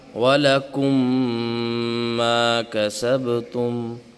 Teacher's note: اب ادغام شفوی کیا ہے، یہ تعریف پڑھیں گے تو سمجھ آئے گا کہ میم ساکن کے فوراً بعد میم مشدد آ جائے، میم ساکن کے بعد فوراً میم مشدد آ جائے تو وہاں پہ ادغام شفوی ہوگا، یعنی دونوں میم مدغم ہو جائیں گے، دونوں میں مل جائیں گے، اور وہاں بھی جو ہے غنہ ہوگا، ادغام کے ساتھ ساتھ غنہ بھی ہوگا، اور غنہ 2 سے 3 سیکنڈ کا ہوتا ہے۔